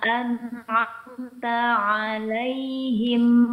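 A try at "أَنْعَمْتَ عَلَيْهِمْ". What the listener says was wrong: Pengucapan huruf ain satu harakat ya, Bu ya. Jangan agak terpanjangkan ya.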